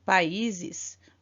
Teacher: países nós temos um hiato porque as duas são vogais e então as duas ficam em sílabas separadas